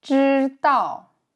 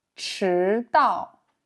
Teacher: Souvenez-vous que la différence entre les deux est la force de l'air. Plus forte pour ch.